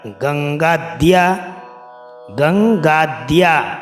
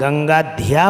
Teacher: बहुत से पाठक क्या करते हैं कि ध्या बोलते हैं, गंगा ध्या बोलते हैं, वो ध्या नहीं है, वो द है, उसमें हलंत वाला द है और उसमें य पूरा है। तो इसलिए दिया गंगाद्या बोलना है।